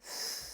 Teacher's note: that is an unvoiced TH. Because if I touch my throat, I feel no buzz.